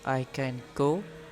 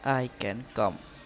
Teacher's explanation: The nasal has the same place of articulation as the stop following it. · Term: Place assimilation in nasal